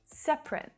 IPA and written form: 'sep rət (Separate)